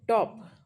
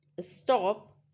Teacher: Puff of air. No puff of air in the case of stop. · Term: unaspirated sound